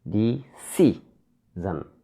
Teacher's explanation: There are three syllables here, decision. We should stress on the second syllable, decision. Second syllable is C, decision, CI.